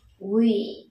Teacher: Week, âm y dài có dấu hai chấm phía sau và âm k